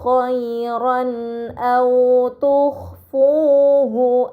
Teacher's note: terdapat harokat fathahtain bertemu dengan huruf hamzah, ini dinamakan izhar halqi, maka fathahtain dibaca secara jelas